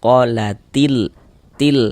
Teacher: Karena cara membaca huruf lamnya itu dibaca izhar, maka disebut dengan izhar qamariyah atau izhar qamari. Nah, jadi huruf lamnya itu dibaca izhar tuh maksudnya itu dia jelas terbaca huruf lamnya. Terbaca qalatil til. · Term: izhar qamariah